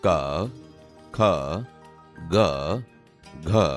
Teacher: તમે જોશો કે તે ગળામાંથી બોલાય છે, તેથી આ કંઠ્ય વ્યંજન છે.